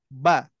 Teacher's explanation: makrajnya adalah pertemuan bibir atas dan bibir bawah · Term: huruf ba